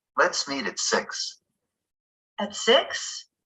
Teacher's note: to check that we heard correctly we can repeat some of the person's words with Rising intonation